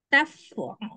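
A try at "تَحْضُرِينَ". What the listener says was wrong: Taf, tah, haknya, fa-nya diganti hak. Tah. Durina. Hurufnya memang ini ya, ha, dot, ro, sengaja.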